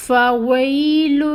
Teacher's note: فا میں ہمس بھی آ رہی ہے · یا ساکن آ رہی ہے اور یا ساکن سے پہلے زیر ہے کسرہ، تو 2 کاؤنٹس لمبا کھینچیں گے کیونکہ یہاں پہ یا مد ہے۔